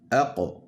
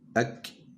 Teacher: le qaf, il faut aller le chercher plus loin que le kaf